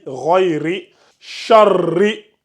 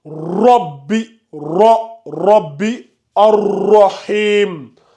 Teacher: ici on amincit la lettre, on n'augmente pas de volume, on le lit ri